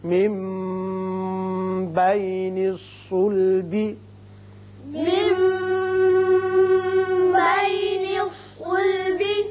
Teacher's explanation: خلق من ماء يخرج يخرج يخرج يخرج من بين الصلب من بين الصلب. نون ساکن کے بعد جب با آ جائے تو وہاں اقلاب ہوتا ہے، میم کی سی آواز نکلتی ہے